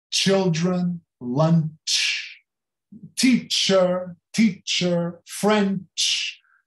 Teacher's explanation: Todo o CH é tsh, como se começasse com T.